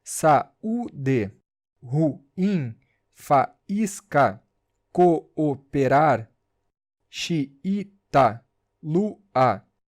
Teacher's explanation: Hiato, encontro de duas vogais. Elas ficam em sílabas separadas.